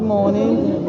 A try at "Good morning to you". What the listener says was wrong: I'm pretty sure that you have noted already, and the way you said it was so fast. Just said good morning, good morning. It's not how to say it. Say good morning to you.